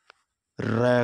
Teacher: जिनके उच्चारण में जीवा को 2-3 बार कंपन के साथ कंपन करना पड़ता हो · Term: प्रकंपित व्यंजन